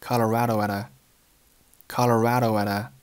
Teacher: 前三个单词 I was in 都是弱读，语速很轻，声音很快，一带而过，并且 was 和 in 连读成了 was in was in， 后面的 Colorado 正常读就好了。注意 Colorado at a 三个单词连读成了 Colorado at a Colorado at a， 那么其中介词 at 和冠词 a 都是弱读